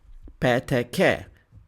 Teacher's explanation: we block the airflow briefly then let it go abruptly. بسرعة. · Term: stop consonant